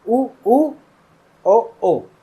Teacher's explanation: इनको बोलते मेरे होठ बाहर की तरफ भी और गोल भी हो जाते हैं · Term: वृत्तमुखी